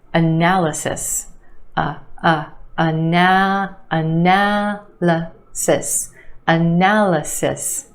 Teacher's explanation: there are two schwas in this word. The first syllable and the third. · 4 syllables in this word with emphasis on the second syllable, the a sound, analysis. And yes, there are 2 schwas in this word. The first syllable and the third, analysis.